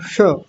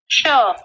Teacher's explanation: जीभ को ऊपर मूर्धा में ले जाते हैं तब बोला जाता है श